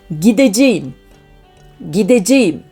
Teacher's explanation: So, in the first one, we have got our verb root git, but the suffix we are adding starts with a vowel. That's why we have got here consonant harmony, t changing into d.